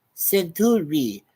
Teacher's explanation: he mispronounces the last word as centuri with the stress on the second syllable